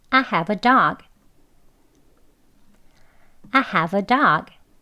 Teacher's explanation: 가지고 있다라는 걸 이제 강조하면서 I have a dog 이렇게 말할 때에 강조되기 때문에 have 이렇게 에 소리 들어가는 have로 발음을 하는 문장입니다. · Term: strong